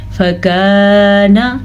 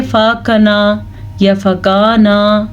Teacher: الف کی آواز شامل کی ہے تو یہ ہمیں لمبا کرنا پڑ گیا ہے۔ اکثر لوگ پڑھتے ہیں فاکنا یا فکانا، اس طرح نہیں پڑھنا آپ نے، فکانا نہ، بس اتنی سی۔ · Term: الف مد